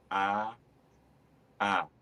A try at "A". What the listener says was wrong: The problem is I'm only hearing one vowel. You're doing the same vowel twice. That's what I'm hearing. This is what I want to hear. A. A.